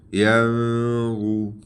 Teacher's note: ناک میں آواز چھپائے، ٹھیک ہے، یعنی اخفا کرنا